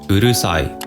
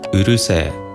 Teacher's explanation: we turn the I sound into a long vowel e to make it sound tougher or sturdier